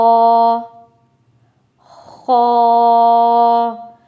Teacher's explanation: खुरदरी आवाज गले से निकले